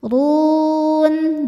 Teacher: Huruf ra dibaca tafkhim karena berharokat di atas yaitu dhammah. Cara bacanya tebal. Run, jika berhenti hukumnya mad arid li sukun, karena mad tabi'i bertemu dengan huruf yang disukunkan karena waqaf.